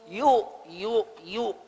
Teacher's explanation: Ya itu dari tengah lidah.